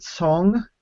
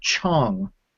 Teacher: you'll hear Cong, like with a TS, and you'll also hear Chong with like a CH kind of sound